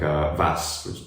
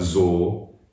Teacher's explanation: It's devoiced at the end, like every other consonant in German.